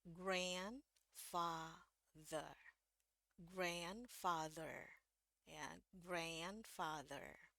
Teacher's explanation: di Inggris Amerika kalau udah ada A ketemu N atau A ketemu M, itu biasanya bacanya jadi E ya. Jadi makanya di sini bacanya um, E, terus ada I kecil di atasnya, terus ada bunyi E.